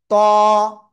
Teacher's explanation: জিহ্বার আগা উপরে দুই দাঁতের গোড়ায় লাগিয়ে একটু মোটা আওয়াজে পড়তে হবে, ত, ক্লিয়ার।